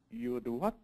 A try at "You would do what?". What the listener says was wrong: Great job.